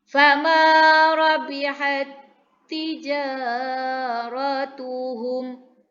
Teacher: Ta yang pertama bertanda sukun ke dalam ta kedua yang berbaris sehingga menjadi satu huruf tasydid.